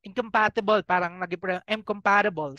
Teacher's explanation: So, yon yung parang ang N naging M. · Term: assimilation